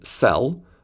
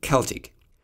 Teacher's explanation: In English, “C” stands for [s] in “cell” but for [k] in “Celtic”.